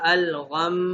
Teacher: جہاں پہ میں نے نون اور میم کی مثال میں آپ کو بتایا الغمی، تو وقف کریں گے تو غنہ ہوگا الغم. میم ساکن ہو جائے گا لیکن ساتھ ہم کیا کریں گے، غنہ بھی کریں گے